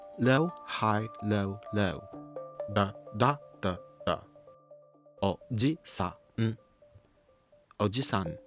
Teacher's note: Oji-san has 4 Mora with a high pitch on the second Mora.